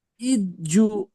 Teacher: হুম, জি হামজার হামজার নিচে যে রয়েছে যেটি হারাকাত হারাকাতের পর তাড়াতাড়ি পড়তে হবে, টান দেওয়া নিষেধ। জিমের উপরে তাহাজিদ রয়েছে, তাহাজিদের পড়াটা আগের অক্ষরের সঙ্গে মিলিয়ে পড়তে হবে।